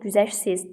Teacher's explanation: Sözün sonu sı, t, f, t, ş, t, x, t ilə bitərsə, bu zaman özündən sonra heç nə gəlməzsə, yaxud samitlə başlayan söz və ya şəkilçi gəlsə, tələffüz zamanı t düşür